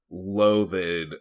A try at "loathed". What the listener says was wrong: It's loathed with a D at the end. It's It's one syllable.